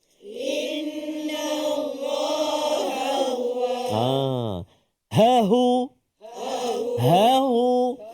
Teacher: dua huruf ha sebelah-sebelah. Jadi kena jelaskan. Kalau tak dia bunyi macam satu.